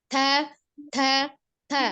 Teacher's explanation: Dilihat dari jelas atau samarnya, huruf ta termasuk huruf al-hams, memiliki sifat al-hams atau samar ya. Ada hembusan udara yang mengalir ketika mengucapkan huruf ta.